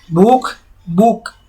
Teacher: महाप्राण के स्थान पर अल्प प्राण का प्रयोग अधिक होता है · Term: अल्प प्राणीकरण